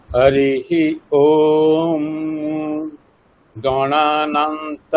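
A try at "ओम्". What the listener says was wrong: ওম নয়, ওম নয়, যখন আমরা যজুর্বেদ পড়ছি ওম ম, আমরা ওম বলে একটা ম বলবো শেষে, ঠিক আছে?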